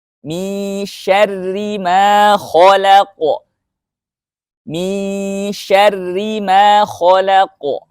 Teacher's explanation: ketika ro-nya tipis itu memakai ujung lidah, ya, mirip dengan makhraj lam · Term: ro yang tipis